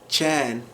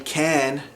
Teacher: the K sound, or the kaf, in Arabic, modern standard Arabic, kaf, it gets pronounced with a CH sound in Iraqi Arabic, in the Iraqi dialect.